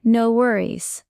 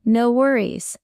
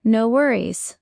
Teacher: the stress is on no, and the tone falls slightly at the end.